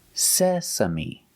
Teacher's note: The stress is on the first syllable, sesame.